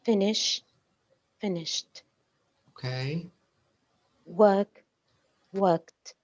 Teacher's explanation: a t sound finish finished okay work worked that's correct so with the verb finish and the verb work the ending of course it's Ed but it sounds like a t right yes yeah it doesn't it doesn't sound like a d